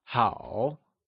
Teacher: good is translated as how, which is said in the falling rising tone